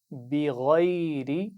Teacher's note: غین کو موٹا پڑھنا ہے اور آخر میں را کے نیچے زیر ہے تو اس کو باریک پڑھنا ہے